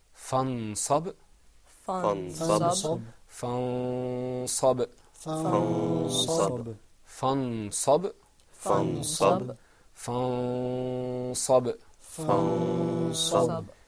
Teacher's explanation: something happened to the noon. It wasn't articulated completely. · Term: ikhfa